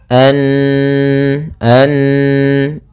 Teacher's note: Apabila ada nunharakat tasydid maka ia dibaca dengan bacaan gunah gunah yaitu menahan suaranya